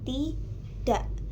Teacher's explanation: Lalu garis miring 1 untuk kata yang kedua atau tidak itu dituliskan dengan tidak, di mana dak itu terdapat bunyi glotal sebagai pengganti dari huruf K sebagai penutup suku kata.